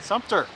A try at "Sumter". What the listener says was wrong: You're saying it wrong. You're putting an N.